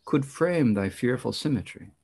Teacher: the stress falls right here on frame